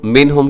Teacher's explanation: منہم کے اندر اظہار حلقی نون ساکن کے بعد حروف حلقی میں سے ہا ہے